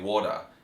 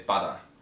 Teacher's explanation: Australians tend to flap their T's and their D's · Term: alveolar flapping